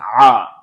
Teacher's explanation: আমাদের মুখের গলার মধ্যে একটু প্রেশার ক্রিয়েট করে উচ্চারণ করব আইন। আইন জবর উচ্চারণ হবে হচ্ছে আ, এভাবে।